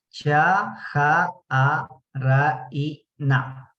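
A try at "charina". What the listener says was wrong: Si aquí ya pronunciamos el cha, ya no pronunciamos la H, ¿no? Ya solamente cha. Cha, A, Ra, I, Na.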